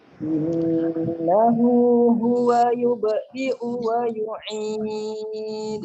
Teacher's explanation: perhatikan gunnahnya, kan didengarkan 2 harokat ya